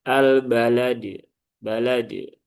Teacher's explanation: cara membaca qalqalah sugro dengan kubro itu sama, ya. tidak ada bedanya. Jadi cukup dipantulkan secara natural. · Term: qalqalah kubro